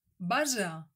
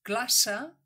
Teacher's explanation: Observa que en el primer cas, base, la essa és sonora. I en el segon cas, classe, la essa és sorda. Per practicar la pronunciació d'aquests dos sons pots imitar el so que fa l'abella per a la essa sonora, i el so que fa la serp per a la essa sorda.